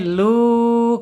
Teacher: Aljaub hanya di mulut enggak boleh ke hidung. Lu tapi ketika masuk ke nun baru alkhaisum masuk ke hidung.